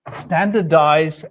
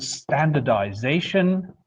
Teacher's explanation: So if you compare standardize and standardization, well then you immediately see that in standardize the stress would have been on the first syllable but in standardization the stress shifts towards the end of the new derivative.